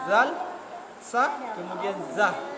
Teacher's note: ujung lidah bertemu dengan ujung gigi seri atas. Dari tempat ini keluar 3 huruf.